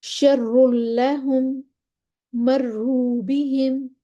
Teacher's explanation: را مشدد پر پیش ہو، شر لہم، مروا بہم، ہم نے را موٹا پڑھ دینا ہے